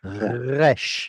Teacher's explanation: Try to avoid the G sound itself, but rather make it a breathy G.